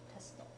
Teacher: when when you have a suit followed by a t sound very often the ooh gets shorten to the point where you almost don't hear it at all